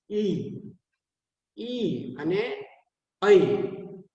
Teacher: તાલવ્ય, તાળવેથી બોલાય. ઈ અને ઐ એ તાળવેથી આપણી જીભ છે એ તાળવે અડી જાય અને આપણે એને બોલીએ